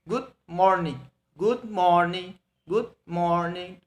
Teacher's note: We say it lower and go to higher, go higher, lower and go higher. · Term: intonation pattern